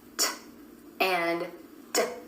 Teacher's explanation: t and d, both made with the tip of the tongue tapping the alveolar ridge behind the top front teeth